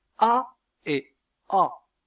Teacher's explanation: la voyelle a est la voyelle la plus ouverte de la langue française c'est une voyelle antérieure c'est-à-dire que la langue est en avant